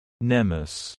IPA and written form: ˈni mɪs (Cnemis)